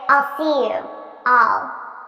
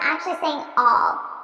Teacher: Notice how I'm actually saying all, which is the unstressed pronunciation. The stressed pronunciation would be I'll.